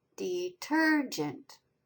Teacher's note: Tur is accented. It's the second syllable.